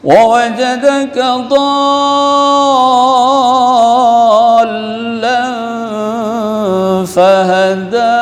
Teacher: penuhkan mad, sempurnakan mad, 3 alif, 3 alif 6 harakah. Lazim, ya, mad lazim kilmi muthaqqal, ya, jadi mad lazim, yang beda mad wajib, beda mad jaiz.